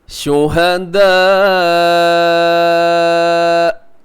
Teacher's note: شہداء، ایسے یہاں وقف کر دیں گے، رموز اوقاف میں سے یہاں پہ طا ہے، تو اس میں جو مد ہے مد متصل واجب جسے کہا جاتا ہے، اور اسے آپ 4 سیکنڈ تک اب اسے کھینچ کے لمبا کر کے پڑھیے گا۔ اور حمزہ بھی جب وقف ہوتا ہے تو وہ جھٹکے کے ساتھ ہوتا ہے، تو جھٹکے سے آپ نے یہاں پہ رکنا ہے، بریک لگانی ہے۔